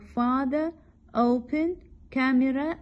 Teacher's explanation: The first syllable of the words like father, open, camera is stressed